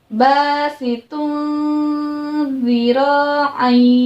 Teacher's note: Ingat, dibaca samar-samar dan juga apa? Ya, didengungkan, ditahan sebanyak 2 harokat ya.